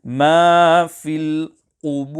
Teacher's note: the ra sakina when making waqf will be full mouth